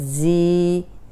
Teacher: اب زا سیٹی والا ہے تو دیکھیں سیٹی کی آواز آ رہی ہے، اس کو زیادہ تکلف سے بنانے کی ضرورت نہیں ہے، یہ خود ہی نکل آتی ہے۔